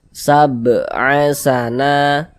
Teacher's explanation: huruf yang memiliki harokat fathah ini dibaca panjang, sehingga na dibaca panjang. Pada tabi'i panjangnya 2 harokat. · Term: mad tabi'i